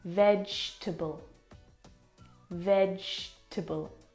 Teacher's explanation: completely forget the E vable we don't pronounce that second syllable